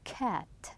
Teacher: We are stopping it twice. K and t.